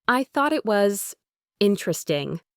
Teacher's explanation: she put a slight, almost imperceptible stress on interesting, and her voice had a slight falling intonation